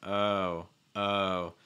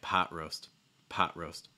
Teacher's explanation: that o sound you wanna make sure again it is a diphthong so you're gonna get some movement